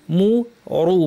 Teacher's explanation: মু পাতলা, রু কিন্তু ভারী